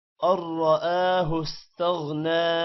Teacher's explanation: را موٹا ہوگا حمزہ پر کھڑی زبر ہے تھوڑا سا لمبا کریں گے استغنى غین موٹا ہوگا